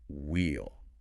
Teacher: if you keep the long E vowel sound from we, if you don't shorten it, then the contraction wheel sounds exactly the same as the word wheel